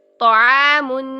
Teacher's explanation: آگے دیکھیے ادائیگی میں طعام، تو موٹا، ڈبل موٹا، ٹھیک ہے، منہ بھر کے ادا کرے، زبان کی جڑ وسط دونوں اٹھائیں